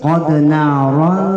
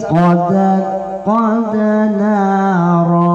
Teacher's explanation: Qad narafa itu sengau. Qad narafa itu namanya samar, itu namanya ikhfa.